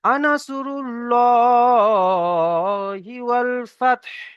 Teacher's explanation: আগের অক্ষরে পেশ এসেছে, পেশ। সেই জন্য করে আমরা আল্লাহ, আল্লাহ শব্দকে পুর করে বলবো।